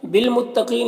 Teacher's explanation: بالمتقین، یہاں پر الف کو نہیں پڑھنا ہے، یہ لام با سے مل کر پڑھا جائے گا۔ قاف حروف مستعلیہ میں سے پر پڑھیں گے